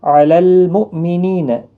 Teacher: علی المؤمنین حمزہ ساکن کو جھٹکی کے ساتھ پڑھا جائے گا